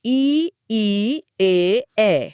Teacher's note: तनाव जीभ के आगे वाले हिस्से में है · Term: अग्र स्वर